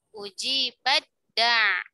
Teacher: Jadi taknya dileburkan ke huruf dal.